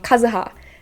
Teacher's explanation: But Kazuha, the intonation will go in the first syllable.